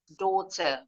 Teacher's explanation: Kalau orang Inggris lebih monyong. O. O. Dan huruf R terakhirnya nggak bunyi.